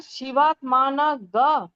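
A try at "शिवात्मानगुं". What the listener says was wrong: গুম গুম গুম। সেকেন্ডটা গুম। গয়ের ওপর চন্দ্রবিন্দু থাকলেই কৃষ্ণ যজুর্বেদে গুম উচ্চারণ হয়। এটা এটা তোমায় করতে হবে আর কি।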